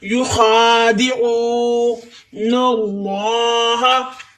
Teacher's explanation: یخادعون اللہ، الف والے لام سے پہلے زبر، الف والے لام سے پہلے زبر یا پیش ہو تو الف والے لام کو موٹا پڑھیں گے، زبان کو تعلق کے ساتھ لگائیں تو الف والا لام موٹا ہوگا